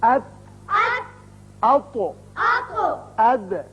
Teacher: اب دیکھیے کھردرا تالو استعمال ہوا. زبان کا اگلا حصہ اور تالو کا جو کھردرا حصہ ہے ان کے آپس میں ملنے سے یہ تینوں حروف ادا کیے گئے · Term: کھردرے تالو کے حروف